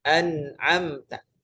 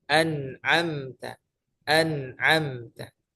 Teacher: Karena kedua makhrajnya sama-sama aktif. Makhraj nun yang di ujung lidah, makhraj nun yang di hidung sama-sama aktif. · Ujung lidah kita menempel an. Kemudian rongga hidungnya juga aktif. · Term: izhar